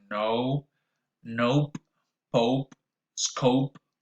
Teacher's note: the tongue glides from mid level to near the roof of the mouth when you pronounce it · your lips need to be tense and rounded. Your jaw rises a little bit with the tongue and closes slightly at the end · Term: the diphthong o, O diphthong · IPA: [ow]